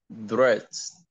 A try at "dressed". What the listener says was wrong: Give me the T. Dressed.